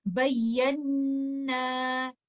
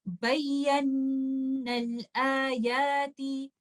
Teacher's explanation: دو ساکن لیٹرز جب دو لفظوں کے درمیان ملیں گے تو میں مد لیٹر الف کو ڈراپ کر دوں گی اور میں اس کو اس طرح سے پڑھوں گی بَيَّنَّ الْآيَاتِ، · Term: اتقاء الساکنین